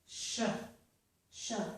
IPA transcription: ʃə